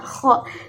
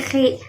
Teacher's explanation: ketika fathah dibaca tebal kho, tapi ketika dibaca kasroh maka menjadi khi. Terdengar seperti tipis tetapi sebenarnya itu masih tafkhim.